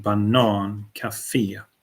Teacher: And then the international words have the emphasis in the end.